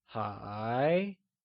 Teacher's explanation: is pronounced using a mid-rising tone, or the second tone